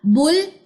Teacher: बा की पेश को लाम की जज़म से मिलाइए, ये हमजा वसली दरमियान में नहीं पढ़ा जाएगा